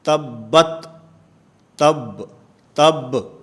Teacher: ان آیات کی تلاوت میں با ہے، اس با کے اوپر قلقلہ ہوتا ہے